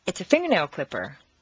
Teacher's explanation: combine three things finger Plus Nail Plus clipper leave the stress on the first word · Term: three word set phrase